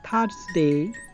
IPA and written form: ˈθɜːzdeɪ (Thursday)